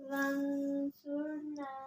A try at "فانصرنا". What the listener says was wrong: ون نہیں فن فا ہے فانصرنا